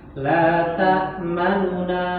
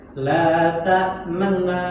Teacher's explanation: Tetap monyong karena dhammah, tapi cepat gitu, kadarnya nggak sampai satu harokat. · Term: rom